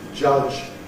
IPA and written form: ʤʌʤ (judge)